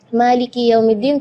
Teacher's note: Itu kadang-kadang ketinggalan karena pengen buru-buru saat membaca Al-Fatihah dalam sholat, jadi Maliki Yaumiddin kedengarannya sukun. Maka ketika kita membaca Maliki, kita perhatikan kaf kasrah di huruf kaf harus kasrah yang sempurna